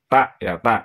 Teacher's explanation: tak itu nanti maksudnya kan ujung lidah ya itu menempel di gigi seri belakang atas ya, di pangkal gigi seri atas di belakang. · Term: huruf tak